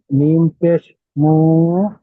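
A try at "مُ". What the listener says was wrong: মু টান দিচ্ছেন কেন ভাই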